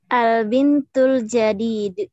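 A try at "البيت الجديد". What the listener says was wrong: Baitu. Bukan bintu, baitul jadid.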